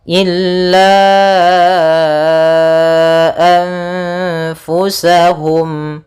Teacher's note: Cara membacanya yaitu nunnya disamarkan kepada huruf fa, seperti itu sambil ditahan gunnahnya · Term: ikhfa